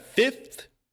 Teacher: Fifth. We just completely omit the F.